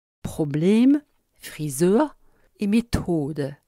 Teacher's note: l'allemand prononçant en schwa le E final caduc du français